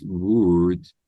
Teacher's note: when they produce wood in English, they have to learn to round their lips a little bit. That's the difference between Japanese wu and English wu.